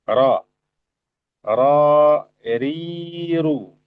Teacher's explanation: Jadi dari ujung lidah bersama dengan area gusi yang sejajar ya. Area gusi yang sejajar dekat dengan makhraj huruf nun. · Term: makhrajur ra